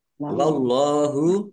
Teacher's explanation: Allahnya dibaca tebal karena harakat di depannya fathah.